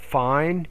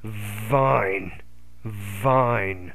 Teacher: you need to pronounce that initial V with more vibration